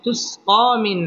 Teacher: পড়তে হবে মধ্যে তবাই তুসকা মিন নুন সাকিনের বামে আইন আসছে আইন ইজহারের হরফ অতএব এখানে গুন্নাহ ছাড়া স্পষ্ট করে পড়তে হবে